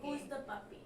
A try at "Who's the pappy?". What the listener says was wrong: It's who's the pappy, not puppy. It's pappy. You have to say it right because it sounds funnier.